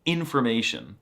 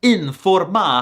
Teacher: In American, the syllables are smooshed together like information, but in Swedish, the syllables are so clearly separated